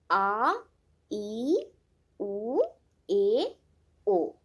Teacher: उच्चारण की गलतियां भी इसी वजह से होती हैं। दीर्घ स्वर जिनमें आवाज स्निग्धता से थोड़ी देर चलती रहती है।